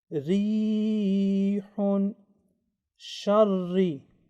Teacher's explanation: But if Ra carries Kasra, then Ra will be pronounced with Tarqiq, thin or softly.